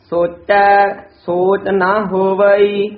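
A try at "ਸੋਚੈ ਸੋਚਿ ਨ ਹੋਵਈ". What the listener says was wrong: सोचै पद दे भी थोड़ा जा ठहरा, यमक ची ला के बोलना है, सोचै सोच नहीं कहना, सोचै सोच ना हो वही, नन्ना मुक्ता है, कई ना नन्ने कन्ना ला देंगे हैं, नन्ने मुक्ते का उच्चारण ना, जे नन्ने का कन्ना लावांगे तो एक मात्रा वध जाएगी, दो मात्रा हो जाएगी, एक मात्रा है, इसका उच्चारण ना उच्चारण करना है।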